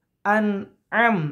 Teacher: Nah, itu izhar safawi. Jadi dua-duanya izhar dibaca dengan jelas tanpa dengung. Ya. Dan tidak boleh dilama-lama.